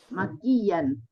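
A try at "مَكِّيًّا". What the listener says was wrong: Iya, harus ada tasdidnya ya. Harus ada tasdidnya. Sebab kalau tidak ada tasdidnya, jadi bahasa Indonesia itu makian, caci makian jadinya. Makkiyan.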